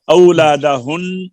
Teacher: औलादहुन नून मुशद्दद है तो यहाँ पे गुन्ना होगा